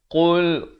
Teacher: qa makhrajnya di pangkal lidah